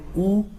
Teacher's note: ऊ और बड़ा ऊ का उच्चारण स्थान होता है होठ से।